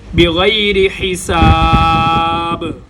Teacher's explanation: یہاں پر با آ رہا ہے اور با کو ہم نے ساکن کرنا ہے وقف کی وجہ سے، لہٰذا با پر قلقلہ ہوگا